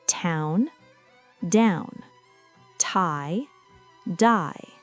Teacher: Then, in the case of the four lingual sounds, /t/ and /d/, the barrier to the air is created by the tongue, whose tip touches and then releases from the alveolar ridge. The alveolar ridge is the small bump located just behind your upper front teeth.